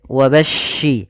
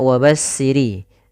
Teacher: Pada lafaz bacaan wabashshiril ladzina, ini sempurnakan di huruf shin, yang mana shin memiliki salah satu sifat, yaitu sifat tafasyi, yang dimana dimaksudkan adalah intisyarus saut, menyebarnya suara di dalam mulut. Wabashshi, ini jangan dibaca wabassiri, ya, hati-hati jangan sampai terbaca dengan huruf shin.